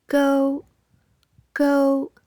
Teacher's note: tone one high pitched stays at the same pitch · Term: Tone 1